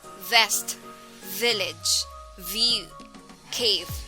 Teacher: speech sound transcribing ipa as small letter v this sound is formed by pressing the front top teeth against the lower lip as air is expelled through the mouth except that the vocal chords are engaged making it a voice